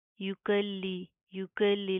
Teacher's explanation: लाम के ऊपर शद सख्ती से मजबूती से जमा कर पढ़ेंगे